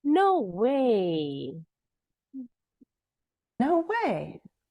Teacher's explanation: Jadi kalau bilang tadi pakai intonasinya naik dulu di kata no, kemudian turun di kata way. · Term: rise-fall intonation pattern